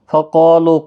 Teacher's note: قاف حرف مستعلیہ ہے اور اس کے ساتھ الف بھی ہے، یہ بھی پر پڑھا جائے گا